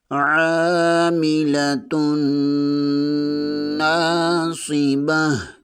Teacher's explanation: تا 2 پیش کے آگے نون مشدد ہے، یہاں پر غنہ لازمی ہوگا۔ نون زبر کے آگے الف مدہ ہے، اسے 1 الف کے برابر کھینچ کر پڑھیں گے۔ صاد حروف صفیریہ میں سے ہے اور صفات کو پر بھی پڑھیں گے۔